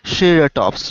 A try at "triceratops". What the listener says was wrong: Triceratops. Okay, triceratops, not ceratops, triceratops.